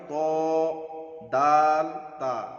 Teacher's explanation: জিভের আগা এবং সামনের উপরের 2 দাঁতের গোড়ার সঙ্গে লাগিয়ে উচ্চারিত হয় ত দাল তা।